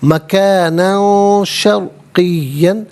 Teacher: مکان میں نون پر دو زبر کی تنوین، اس کے بعد شین حرف اخفا ہے تو یہاں تنوین کو اخفا کے ساتھ پڑھا جائے گا